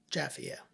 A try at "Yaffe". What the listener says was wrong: yeah, Yaffe. Not Jaffe. Jaffe's a different family. They pronounce it Yaffe. It's written with a Y.